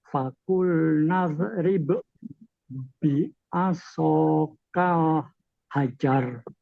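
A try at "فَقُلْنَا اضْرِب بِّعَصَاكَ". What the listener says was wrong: Fakul naub itu jangan dipantulkan, jangan kolok-kolakan. Fakul naub bukan naub, bukan gitu, jangan. Memang mbaknya sukun. Idrib itu kan sukun mbaknya. Tapi karena di depan ada huruf ba, namanya masuk kategori idgham mutamatsilain. Jangan disukun, jangan dikolok-kolakan. Faqulna idrib bi'asakal hajar.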